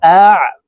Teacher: আইন হরফকে হালকের মধ্যে মধ্যখান থেকে চাপ দিয়ে উচ্চারণ করবো কারণ আইনের মাখরাজ হলকের মধ্যখান থেকে হবে